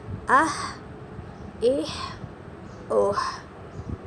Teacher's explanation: یہ آپ کا حروف حلقی ہے، یہ شروع والے حلق سے ادا ہونے والا ہے